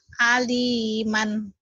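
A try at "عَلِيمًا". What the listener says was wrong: Hutang ain ya, tuh belum mantep ya. Ali jadi kurang apa? Itu huruf tenggorokan ya, adanya di tenggorokan. Kalau A tadi kan jangan di tenggorokan, kalau tadi A. Ini A. Aliman.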